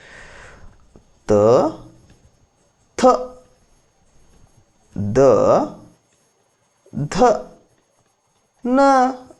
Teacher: ನಾಲಿಗೆ ಹೋಗಿ ಹಲ್ಲಿಗೆ ಬೆಲ್ ಹೊಡಿತಿದ್ರು ಬರೊಬ್ಬರ ಹಂಗಾಗಿ ದಂತ್ಯ ಹಲ್ಲಿಗೆ ದಂತ ಅಂತೀವಿ ಇವು ದಂತದಿಂದ ಹುಟ್ಟುವುದರಿಂದಾಗಿ ದಂತ್ಯ ಅಂತೀವಿ